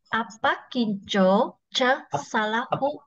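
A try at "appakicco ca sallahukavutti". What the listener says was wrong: There is no J actually. Upper. So this second word, you can see the second word, sal. This word has to be pronounced by pausing here. Sal lahukavu. Sal. Sal la hukavu. Sal sal lahukavu. Lahuka.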